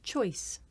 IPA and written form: ʧɔɪs (choice)